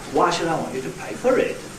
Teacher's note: I went up and then down.